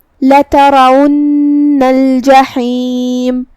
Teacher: کلمت الجحیم میں یہاں حرف الحا ہے. ہم اسے حلق کے درمیان والے حصے سے ادا کریں گے.